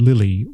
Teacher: the first letter 𐑦 has the /ɪ/ sound, while the letter 𐑦 at the end of the word has the short unstressed /i/ sound